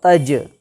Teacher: دیکھیے تا جیم زبر تج، آپ کو معلوم ہے کہ جیم ساکن ہے، یعنی جیم کے اوپر جزم آ گیا تو جیم ساکن ہو گیا، لیکن یہ جیم حروف قلقلہ کے 5 حرف میں سے ہے، تو یہاں پر ہم قلقلہ کریں گے، یعنی اس جیم کا جو مخرج ہے وہاں پر زبان کو لے کر کے جائیں گے، اور جانے کے بعد اس کو فوراً واپس کریں گے